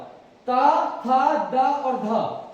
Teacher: उसके बाद ता, था, दा और धा, जो ता वर्ग वाले वर्ण हैं, इनका उच्चारण कहां से किया जाता है, दंत से किया जाता है। कहां से, दंत से किया जाता है, और इन्हें तभी दंतीय व्यंजन भी कहा जाता है।